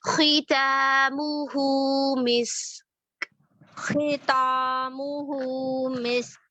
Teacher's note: खी खौ मुस्ताइलिया में से है, इसको हम मोटा करके पढ़ेंगे